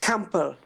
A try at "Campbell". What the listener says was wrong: Okay, so silent P. Campbell.